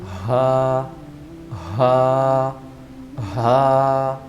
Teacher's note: حرف ہا حلق کے نیچے والے حصے سے نکلتا ہے، یعنی کہ جو ہمارا چیسٹ ہے اس سے اوپر، یعنی کہ جو ہماری پسلی کی موٹی ہڈی ہے اس کے اوپر اگر ہم ہاتھ رکھیں تو یہ ہمارے حلق کا نیچے والا حصہ کہلاتا ہے۔ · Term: حروف حلقی